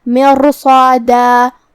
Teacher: ہم را کو اور صاد کو اور جو کہ اس کے بعد مد الف ہے تو ہم یہ 3 حروف کو بھاری آواز میں پڑھیں گے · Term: تفخیم